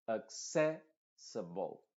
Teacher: Las dos últimas vocales son schwa y la primera también.